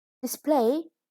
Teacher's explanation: is a verb with a stress on the second syllable